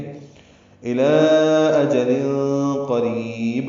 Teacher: الی اجل قریب، رکنا ہو تو با ساکن پہ قلقلہ ہوگا. اجل میں اخفا ہے، قاف پر ہے، را باریک کری یا مدہ ہے، اور با پہ قلقلہ.